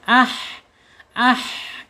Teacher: Makhrajnya ada di tenggorokan tengah. Kemudian sifatnya ada di alhams. Ketika dia sukun ya ah gitu mengalir.